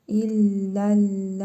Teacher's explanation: Sonra həmzə gəlib. Məddi muttasıl qaydasına görə ləm hərfini 4 əlif miqdarı uzadaraq oxuyuruq.